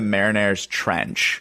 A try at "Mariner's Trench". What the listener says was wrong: You just said that like Marinera's trench. Oh, the Mariana Trench?